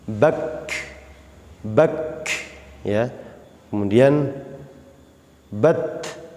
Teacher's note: Nah, kalau kaf dan ta ini syiddah, tertahan tapi tidak boleh dipantulkan. Awas, hati-hati, huruf kaf ini memiliki sifat hamas ya, syiddah dan hamas.